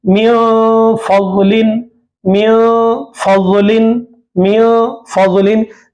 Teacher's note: नून साकिन के बाद फा आ रहा है, फा इख्फा में से है, तो नून की आवाज को नाक में छुपाना।